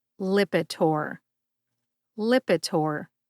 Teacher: emphasize that first syllable lip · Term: emphasis